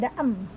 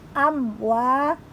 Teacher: mim sukun bertemu wau dibaca jelas izhar syafawi Jadi tidak boleh membaca contoh yang salah tidak Adam tapi jelas